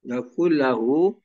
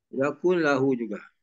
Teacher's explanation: Jadi tak ada dengung dan terus nun tu hilang, dimasukkan. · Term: idgham